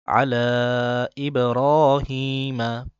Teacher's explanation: আলা তিন আলিফ টান দিতে হবে ইবর মোটা করে